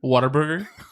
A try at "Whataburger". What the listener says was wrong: It's Whataburger. You have to pronounce the W.